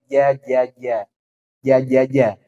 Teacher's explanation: penyempitan di tengah lidah karena lidah yang naik ke atas